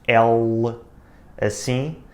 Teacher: Depois, o segundo motivo é o L. Nós em português temos aquilo que em inglês se chama dark L, que é este L assim, que é um pouco diferente do L das outras línguas românicas. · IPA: /ɫ/